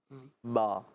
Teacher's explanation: दोनों होठों के बीच से अदा होता है